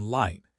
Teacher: The light L, like in light, is made with the tip of your tongue touching your teeth.